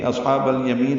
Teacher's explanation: صاد ساکن ہے، اس پہ ہمس ہوگا ، پر پڑھیں گے، ہا وسط حلق سے ادا کریں گے،